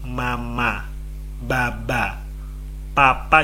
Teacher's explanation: mama sama Baba itu kan bentuk bibirnya sama sama-sama ngatuk-ngatuk jadi nempel bibir atas nempel ke bibir bawah